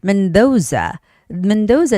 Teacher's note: The name has the second syllable stress.